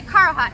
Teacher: I say Karahat. I put like the emphasis on the Kara part, and it kind of goes in the middle.